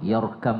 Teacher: ro Dibaca juga tebal ketika dia berbaris sukun berbaris sukun yang diawali oleh huruf yang berbaris di atas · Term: tafkim